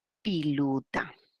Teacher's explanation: va a pasar la confusión entre la vocal I y la E, la vocal O y la U.